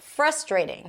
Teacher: in the US it is likely to be pronounced as frustrating. Stress is on the first syllable.